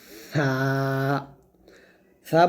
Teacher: সা উচ্চারণ হবে জিহ্বাটা উপরের দাঁতের আগে লাগিয়ে এরকম সা বলার সময় এক আলিফ টান দিতে হবে।